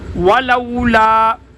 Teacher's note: واو کے اوپر ہونٹوں کو گول کیا جائے گا، جیسے کسی پائپ وغیرہ میں پھونک مارنے کی شکل میں ہونٹوں کو گول کیا جاتا ہے، اسی طرح واو کو ادا کرنے کے لیے بھی اپنے ہونٹوں کو گول کیا جائے گا۔